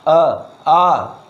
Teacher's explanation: आ कंठ से ही निकल के आ रहा है। छोटा आ, बड़ा आ, ये कहाँ से निकल के आ रहा है, यह जो है कंठ से निकल के आ रहा है।